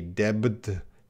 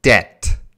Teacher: this B is silent. There is zero B sound.